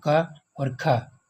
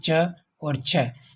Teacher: अघोष व्यंजन उनको कहते हैं जिनमें गूंज नहीं होती और उनमें स्वर तंत्र काम नहीं करता है